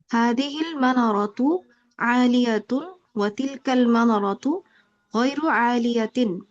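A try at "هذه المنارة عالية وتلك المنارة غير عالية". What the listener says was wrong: হ্যাঁ, মাশাআল্লাহ, অনেক সুন্দর বলেছেন আপা।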